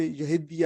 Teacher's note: آپ کو پتہ ہے کہ تا اور دا کو اگر مدغم ادغام کر دیا گیا ہے تو پھر دو دال ہو جائیں گے